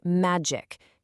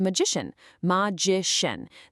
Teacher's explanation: a word ends with that hard C- sound, but then a suffix comes along and just softens it completely into a sh sound.